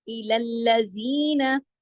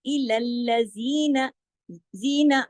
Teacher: जी को दो हरकत खींचा, नून को सिर्फ एक हरकत